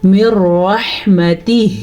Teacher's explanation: ایک قسم کا نام ہے ادغام بلا غنہ، اس میں یہ ہوتا ہے کہ آپس میں ملائیں لیکن بغیر غنے کے ملائیں. تو یہ والا قاعدہ لام اور را کے ساتھ ہوتا ہے.